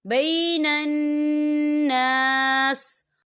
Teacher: یا دیکھیں آپ کو چھوٹی سی توہیں نظر آ رہی ہے، تو یہ وقف مطلق کی علامت ہے، تو یہاں پر ٹھہرنا بہتر ہے۔ وقف کی صورت میں سین جو ہے وہ ساکن ہو جائے گا